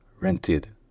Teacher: C'est le seul et unique cas où le e dans le ed est bel et bien prononcé comme une voyelle, où il n'est pas muet. Et donc le ed est prononcé soit id, soit ed, selon les régions, selon l'accent.